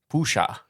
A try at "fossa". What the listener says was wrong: No, there's no A at the end. ha, ha. But for a lot of English speakers, they pronounce it like Fossa,